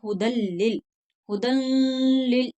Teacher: लेकिन यहाँ पर हुदल लिल, हुदल, हुदल, ला, नून की आवाज नहीं आनी चाहिए, हुदल लिल, दाल को डायरेक्ट जो है वो लाम से मिलाना है, हुदल लिल, हुदल लिल, इस तरह से नहीं, नून की आवाज नहीं आनी चाहिए, हुदल लिल। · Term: इदगाम बिला गुन्ना